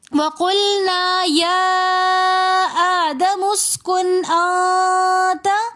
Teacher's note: پہلے نون کے اوپر ہم نے غنہ نہیں کرنا بلکہ دوسرے نون کے اوپر ہم نے اخفا کرنا ہے